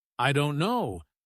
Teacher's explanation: the stress is on don't, not on I or no.